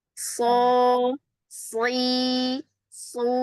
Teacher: Ah, ini pindah ke sin su itu sin su itu shad afwan itu shad ya. Kalau shad pangkal lidahnya enggak pernah turun. Mau kasrah mau domah mau fathah.